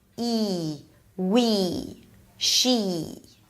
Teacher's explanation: okay it's a high vowel High because the tongue is high it's a tense vowel because all the articulation organs are really tense the lips pull to the sides a bit